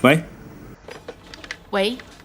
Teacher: it is the second tone, the rising tone. Don't use the fourth tone, the falling tone.